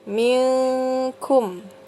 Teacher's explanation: Jadi dibacanya samar-samar atau berdengung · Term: ikhfa